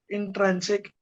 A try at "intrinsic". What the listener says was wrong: It is in. Let's go slowly. Intrinsic. Trin, not trad.